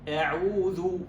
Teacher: الآن الهمزة، شوف الآن حركة الفم، أعوذ. ألاحظ ضم الشفتين عند النطق بالواو، عند النطق بالضمة